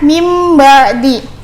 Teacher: Iqlab yaitu membalik atau menukar, yaitu menukar huruf nun mati menjadi huruf mim. Jadi nun mati ketika bertemu dengan huruf ba, dibacanya itu seakan ada mimnya.